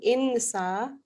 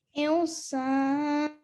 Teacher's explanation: In this case, it's followed by a seen, and in this case we do an ikhfa, which is a partially hidden noon sound. So rather than saying insa, we say insan.